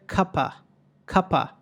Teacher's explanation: ఈ అవ్ అనేటువంటి పదంలో వి ఎగిరిపోతుంది. ఆ వి ఎగిరిపోయి సింపుల్గా ఏమంటారంటే కప కప ఇన్స్టెడ్ ఆఫ్ కప్ ఆవ్.